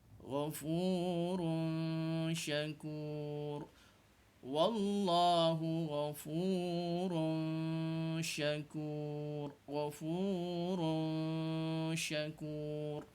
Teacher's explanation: Kena sembunyikan suara tanwin di hadapan tu. Suara tanwin tu hendaklah disamar-samarkan sahaja bunyi dia. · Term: ikhfa